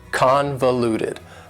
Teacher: The final adjective that I have for you is convoluted. Convoluted also has 4 syllables and the stress is on the first syllable.